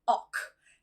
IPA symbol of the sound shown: ɒk